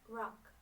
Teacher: Produced with tongue, not touching alveolar ridge, approximately in the middle.